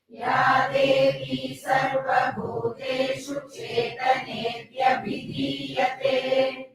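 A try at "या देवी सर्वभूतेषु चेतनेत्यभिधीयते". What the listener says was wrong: Again, Tiyate is Dirgham, long.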